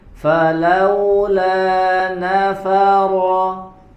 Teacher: huruf lam yang berharokat fathah, coba. La dibaca dengan tipis